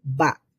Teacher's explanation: বা বলার সময় নাক দিয়ে সাউন্ড বের হবে না, শুধুমাত্র সাউন্ড বের হবে মুখ দিয়ে